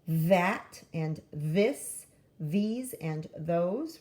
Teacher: TH, if you make it buzz like v, it can start off words like that and this, these and those